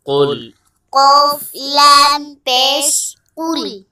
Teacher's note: سب سے پہلے دیکھیں موٹا قاف ہے، تو جب بھی موٹا قاف کو آپ نے پڑھنا ہے اور یہاں پر آپ نے کاف کو باریک نہیں کرنا، تو بلکہ آپ نے قاف کو موٹا کرنا ہے